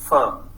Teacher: F sound, labiodental fricative, is not present in Pakistani languages